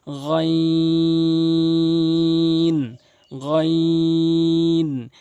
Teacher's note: গাইন হলকের শেষ থেকে তিন আলিফ টেনে পড়বেন